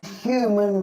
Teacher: in New York accents, the H is dropped and we're left with U.